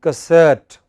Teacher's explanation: the first syllable is hardly heard